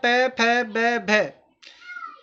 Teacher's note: पै, फै, बै, भै होठ से उच्चारित होते हैं।